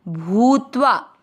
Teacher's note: भू की मात्रा बड़ी लंबा खींचना है